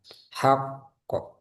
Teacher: Jadi kalau tasdid ketika wakaf ya, huruf qaf itu dijeda dulu sebentar. Hak kok. Jadi bukan langsung hak kok, hak kok, tapi hak kok.